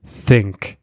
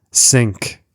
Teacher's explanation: some learners pronounce TH as S, sink, instead of think. So this happens when the tongue is too far back.